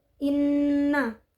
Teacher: Nun berharakat hidup yang diwakafkan di ayat keenam lafaz Inna terdapat hukum bacaan gunah yaitu Nun bertasdid cara membacanya adalah dengan mendengung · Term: gunnah